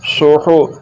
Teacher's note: یہ ہا حلق کے درمیان والے حصے سے نکلے گا، اس ہا کا مخرج حلق کا درمیان والا حصہ ہے